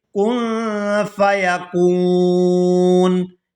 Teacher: وقف کی صورت میں نون جو ہے یہ ساکن ہو جائے گا